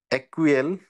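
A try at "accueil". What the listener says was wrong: না, একুয়েল না, ডাবল এর সাইলেন্ট। আকই, এটা কি হবে? আকই, হ্যাঁ, আকই।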